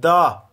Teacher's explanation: जब आप दा बोलते हैं तो आपकी जीभ कहीं ना कहीं दांतों को टच करेगी। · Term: दंत्य